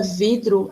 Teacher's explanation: A palavra vidro, a sílaba forte, a sílaba tônica é vi